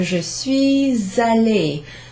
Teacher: That's the liaison there between the S and the A.